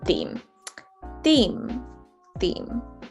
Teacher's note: the e sound is very stretched sound and it's actually much harsher than we normally pronounce words in the american accent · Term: long e sound